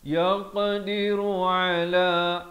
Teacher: Yaq ada lantunan di sini.